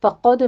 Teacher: قوف کو پر پڑھتے ہوئے دال کے اوپر قلقلہ کریں گے